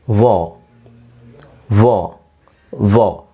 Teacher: ವಾರ್ ಅಂತ ಹೇಳಲ್ಲ, R silent ಆಗಿರುತ್ತೆ. Either you have to say ವಾ ಆರ್ ವೋ.